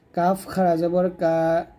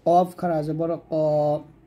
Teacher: গোড়া হতে একটু আগে বাড়াইয়া তার বরাবর উপরের তলার সঙ্গে লাগিয়ে কাফটা পাতলা করে উচ্চারণ করবেন আর কফটা মোটা করবেন